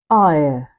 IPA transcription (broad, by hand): aɪə